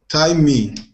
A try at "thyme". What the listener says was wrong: And we do not pronounce the H. Just like the what time is it?